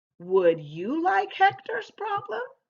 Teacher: the second sentence ends in a question mark so our voice goes up as we read it